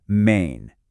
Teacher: it sounds a lot like May, but you add this soft, kind of nasal N sound at the end